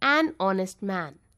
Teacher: Honest starts with the vowel sound O when we pronounce. The letter H is silent. We pronounce honest as honest.